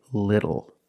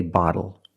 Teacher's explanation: When you see TLE or TTLE, phonetically the T is between vowels. And for this reason, the T changes to a fast D in American pronunciation.